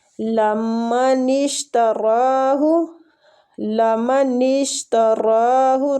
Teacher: را کو کھینچیں گے کھڑی زبر کی وجہ سے اور پور بھی پڑھیں گے اس کو